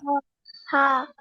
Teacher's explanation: কণ্ঠনালীর মধ্যখান চেপে পড়তে হবে